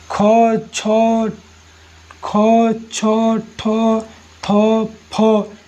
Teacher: इसे बोलने में कठिनाई भी हो रही है, मुख से अधिक हवा भी निकल रहा है, इसलिए क्या है? एक महाप्राण है।